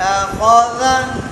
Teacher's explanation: خا موٹا، خا کے زبر کو تھوڑا اٹھا لیا اور دال باریک